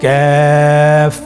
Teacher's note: কাফের মাখরাজ হলো জিহ্বার গোড়া থেকে একটু আগে বাড়িয়ে তার বরাবর উপরে তালের সঙ্গে লাগিয়ে উচ্চারিত হয়। · কাফ উচ্চারণের ক্ষেত্রে অবশ্যই পাতলা করে উচ্চারণ করতে হবে এবং 3 আলিফ টেনে পড়তে হবে।